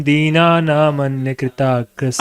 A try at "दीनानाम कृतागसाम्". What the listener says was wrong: अन्य कहाँ से आ गया भाई? इसमें अन्य कहाँ से आ गया? दीनानाम अकृतागसाम्।